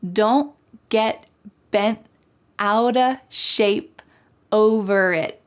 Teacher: All of these T's are what we call stopped T's. So it's not wrong to say don't get bent, but when you hear fast American English speakers, you're gonna hear them stop the T in their mouth.